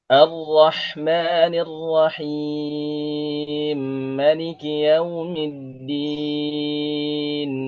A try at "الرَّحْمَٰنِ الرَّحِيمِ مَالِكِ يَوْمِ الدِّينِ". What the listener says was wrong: Qasrnya pendek aja, Ustadz. Nggak usah terlalu panjang.